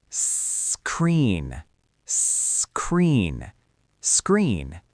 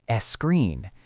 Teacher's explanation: Notice how I don't add an E at the beginning. I don't say screen.